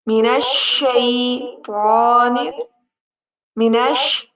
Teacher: यहाँ पर शीन जो है ना, ये हरूफ शजरिया में से है, इसमें आपकी आवाज फैलेगी।